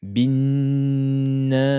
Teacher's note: dédoublement de la lettre Noun. Prononcez-la de façon prolongée.